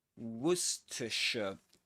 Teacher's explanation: And the accented syllable is the first one.